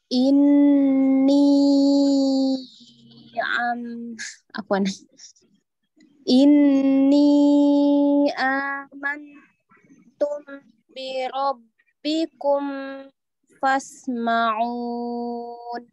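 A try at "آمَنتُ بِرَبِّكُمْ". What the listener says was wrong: Nah, ketika kum jangan terlalu lama.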